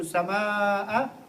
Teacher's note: over here you stretch the alif, and this is called maddi muttasil